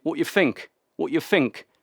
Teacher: It sounded like the TH in think turned into an F.